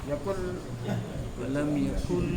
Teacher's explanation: Tak ada bunyi hidung. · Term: tindih